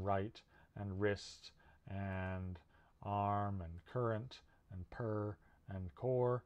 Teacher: sound okay the next sound lowercase r represents the er sound this sound is voiced and i'm calling it an r sound and it's produced at the alveolar ridge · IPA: /r/